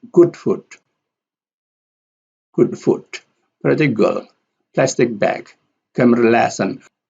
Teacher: The stress pattern here is secondary and primary